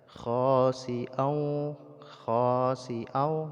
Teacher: Idgham itu masukkan suara tanwin ke dalam huruf waw sehingga tanwinnya tidak lagi dibaca tapi langsung kepada huruf waw, kepada tasydid waw, dan disertai dengan dengung